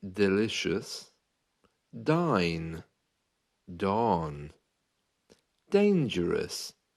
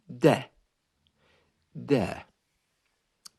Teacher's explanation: the letter d as you can hear there is made by putting the tongue up to the top Parts where your front teeth meet your gums okay so just at the top of your front teeth de